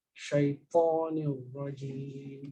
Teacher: So I want you to avoid the rounding of your mouth with the ta now.